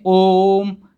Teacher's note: ओम बोलने में हमको थोड़ा सा ज़्यादा समय लगता है, यानी 3 मात्रा का समय लगता है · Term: प्लुत स्वर